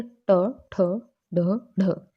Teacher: जब जीवा की उल्टी हुई नोक का निचला भाग मूर्धा से स्पर्श करता है, तो ऐसी स्थिति में जो ध्वनि उत्पन्न होती है वो क्या कहलाती है, मूर्धन्य व्यंजन कहलाती है। जैसे ट, ठ, ढ, ढ, एकदम से जीवा उल्टी होके टच करके नीचे आ जाती है, ओके, तो मूर्धन्य व्यंजन कहलाते हैं।